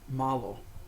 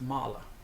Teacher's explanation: the O, when it's unstressed, kind of turns into like a schwa, kind of an A sound